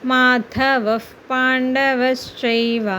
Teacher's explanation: విసర్గ వచ్చిన తర్వాత పా వచ్చింది అంటే అప్పుడు కచ్చితంగా ఆ విసర్గని హ కింద కాకుండా ఎఫ్ కింద పలుకుతాం